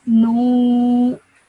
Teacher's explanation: because of the vaw madda, you have to stretch the sound out of nu to 2 seconds.